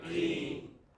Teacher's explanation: In the first word 19, which part of the word is stressed? Teen.